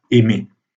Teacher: Or, puisque dans l'infinitif aimer, comme vous entendez, le R n'est pas prononcé, on considère que la syllabe tonique finale est ouverte, est libre.